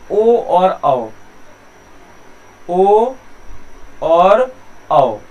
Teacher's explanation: ओ और औ, इन दोनों स्वरों का उच्चारण कंठोष्ठ से होता है